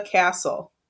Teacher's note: consonant LE exception because we don't hear that T